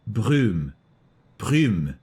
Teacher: Less U sound and more Y sound.